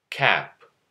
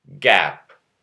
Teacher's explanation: K and G are both velar stop consonants. K is unvoiced, G is voiced.